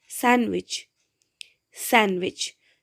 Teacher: When we pronounce it, we don't pronounce this D, sandwich, sandwich. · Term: elision